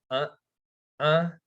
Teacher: uh uh that's a glottal stop and what that means is there's like a muscle in your throat called a glottis and it closes and it stops the air